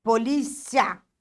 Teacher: Já polícia, o ditongo é crescente. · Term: ditongo crescente